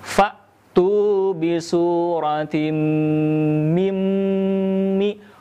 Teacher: Nun sukun bertemu dengan mim, dinamakan dengan idgham bigunnah, maka tahan suara kita tidak tergesa-gesa selama 3 harokat ya.